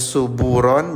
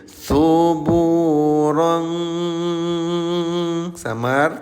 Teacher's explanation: Ya, hukum tajwidnya ikhfa. Cara bacanya samarkan bunyi tanwinnya ya. Yang asalnya suburon jadi suburon samar tahan dua dua ketukan atau dua harakat ya.